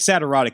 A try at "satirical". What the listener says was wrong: Satirical? It sounded like you were saying sad, erotic.